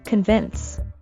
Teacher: the word is stressed on the second syllable convince and don't forget the sound at the end convince his